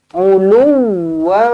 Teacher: Ada sabdu dekat huruf waw. Okey, ada sabdu kena beratkanlah, kena tekankan lebih sikit. Uluwan. Jangan uluwan.